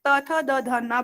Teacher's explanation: इसी तरीके से त थ द ध न बोलेंगे तो जिह्वा दांत से स्पर्श कर रही है, दांत पर टच कर रही है, इसलिए दंत्य वर्ण भी कहलाते।